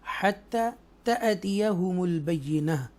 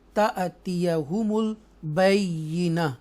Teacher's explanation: हत्ता तअतियहुमुल बय्यिना, तो यहाँ पर झटके से, जर्क से ट्विच कर कर हम पढ़ेंगे क्योंकि हमज़ा साकिन है, हमज़ा के ऊपर जज़म है, इसलिए हम इसको जर्क से ट्विच कर कर झटके से हम इसको अदा करेंगे